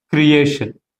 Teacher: Here the letter T is followed by the combination of I and O vowels, hence its pronunciation is, its sound is sha.